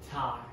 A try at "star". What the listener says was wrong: No, you said tar, not star. No, no, it's a TH, not a T.